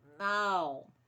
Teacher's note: A gente usa o nariz, de certa forma, na hora que vai falar, para indicar o tom da palavra. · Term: nasalidade